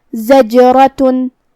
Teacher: ہمیں جیم کو ہلاتے ہوئے یہ کلمہ کو ادا کرنا ہے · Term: قلقلہ